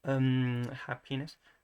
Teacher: the P, which is a bilabial plosive